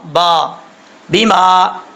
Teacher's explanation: با کا مخرج ہے دونوں ہونٹوں کی تری والی جگہ آپس میں ٹکرائے گی ملے گی تو با پڑھا جاتا ہے